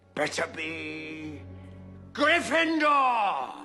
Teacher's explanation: Finally, Better be Gryffindor! uses falling intonation. Also, it shows a final decision is made.